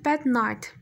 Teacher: D-dan sonra N səsi gəlib, yəni burada artıq nasal plosion hadisəsi baş vermişdir